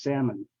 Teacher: It's an exception to the rule because we have almonds, you know, the nuts that we eat, almond, but here it's not salmon because the L here is silent